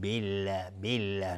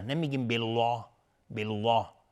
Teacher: بالله قبل از لفظ جلاله کسره اومده. لفظ جلاله ترقیق میشه، نازک تلفظ میشه.